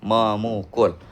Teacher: Nah, adapun men ditambah pukul menjadi memukul. Eh, fonem p luluh kepada n menjadi m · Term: peluluhan fonem